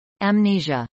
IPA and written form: əmˈniʒə (amnesia)